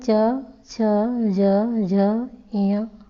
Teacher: ये आपके तालव्य हैं क्योंकि ये तालु से बोले जाते हैं।